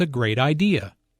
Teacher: Notice the emphasis on great.